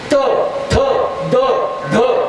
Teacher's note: प फ ब भ म ओष्ठे ओठाला ओठ लागला. त थ द ध हे दांतवे, जीभ येऊन दाताला लागली